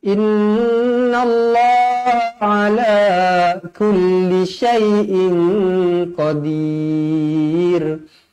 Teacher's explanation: Lafzul jalalah dibaca tebal kerana sebelumnya berbaris atas.